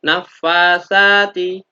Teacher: saknya berharokat fathah diikuti alif karena panjang. Maka dibaca panjang satu alif atau dua harokat. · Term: bacaan matopi'i